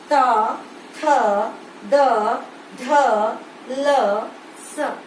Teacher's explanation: आपकी जीभ जो है वो दांत के पिछले भाग पर टकरा रही है। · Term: दंत्य